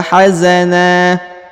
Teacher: na di ujung dirubah dari tadinya nan nan ya menjadi na Ya karena berada di ujung ayat dan dipanjangkan dua harakat